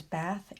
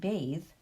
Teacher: when the e is added the vowel turns from short to long